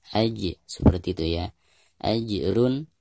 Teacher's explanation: ada jim sukun dan posisinya di tengah bacaan, sehingga dianggap qalqalah sugro dan harus dibaca dengan sedikit gerakan memantul